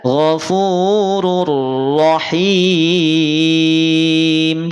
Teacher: kalau huruf idgamnya ro bunyinya dari UN jadi ur · Ini domatain. Ya, domah ataupun tanwin domahnya dimasukkan pada huruf ro. Jadi dibaca ghafurur rahim. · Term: idgham